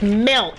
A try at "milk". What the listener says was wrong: There's no E. You're making me mad. Milk. There's no E. It's milk.